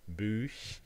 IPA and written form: buːç (book)